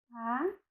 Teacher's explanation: a língua se posiciona mais no meio da boca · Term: vogal central